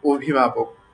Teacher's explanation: শুরুর যে অটা আছে এটাকে আমি ও এর মত করে বললাম। হ্যাঁ অভিভাবক। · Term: অধনি